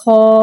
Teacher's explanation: الف سے پہلے زبر آ رہا ہے، الف مدہ ہو رہا ہے، لہٰذا حرف مدہ کو ایک الف یعنی 2 حرکات کے برابر کھینچ کے پڑھیں گے اور زبر کو منہ کھول کے ادا کریں گے. · خا حرف مستعلیہ ہے، لہٰذا اس کی آواز حلق سے موٹی ادا ہوئے گی اور الف کو بغیر کھینچے پڑھیں گے.